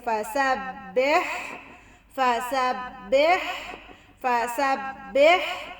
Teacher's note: ہا کو واضح گلے سے